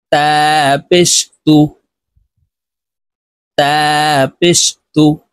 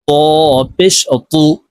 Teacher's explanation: তা পাতলা করে উচ্চারণ করতে হবে আর এই ত মোটা ভাবে উচ্চারণ করতে হবে